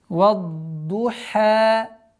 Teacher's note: Вад-Духа. С огласовки вау, мягкий звук, с огласовки фатха уходим на твердое произношение звука дад.